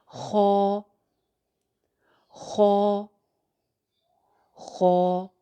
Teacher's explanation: خو کو بھی ایک الف ہی لمبا کر کے پڑھنا ہے